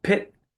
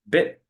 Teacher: I feel a bigger puff of air